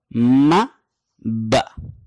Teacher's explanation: ये दोनों हरफ निकलते हैं होंठों के दोनों हिस्से प्रेस करने से, तो दोनों होंठों को आपस में मिलाएंगे तो निकलेगा म ब।